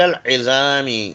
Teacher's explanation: عین کو حلق سے پڑھیے، حلق کے درمیان حصے سے